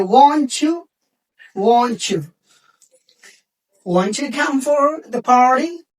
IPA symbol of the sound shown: tʃ